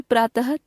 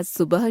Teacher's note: ह की भाति उच्चारित किया जाने लगा है अतः हिंदी में प्रातः तथा सुबह शब्दों की अंतिम ध्वनि के उच्चारण में अब कोई अंतर नहीं रह गया है